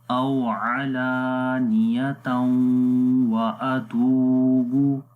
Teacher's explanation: تا کو پھر آگے واو کے ساتھ ملائیں گے، غنہ کریں گے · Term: ادغام بالغنہ